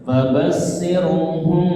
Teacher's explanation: Ikhfa safawi ketemu nih ya, kemarin ya. Mim sukun bertemu huruf ba, jadi tahan bentar ya.